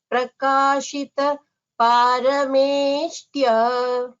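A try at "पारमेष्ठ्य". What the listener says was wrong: Parameshthya Mahaprana. The tha should be clearer.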